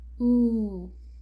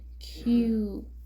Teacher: It sounds more like ooh, and sometimes even includes a slight y sound, like you in Q.